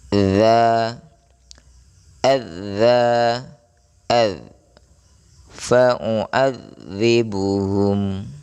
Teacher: Ketiganya merupakan ujung lidah menyentuh ujung gigi seri bagian atas. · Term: huruf zal